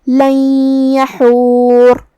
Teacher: کلمت یحور میں یہاں حرف الحاء ہے، ہمیں اسے حلق کے درمیان والے حصے سے ادا کرنا ہے